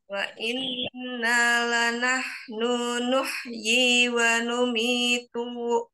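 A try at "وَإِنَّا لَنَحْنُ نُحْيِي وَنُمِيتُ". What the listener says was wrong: Jangan diayun-ayun ya. La nahnu nu-nya pendek, wa numitu tu-nya pendek. Wa inna la nahnu nuhyi wa numitu wa nahnu al-warisun.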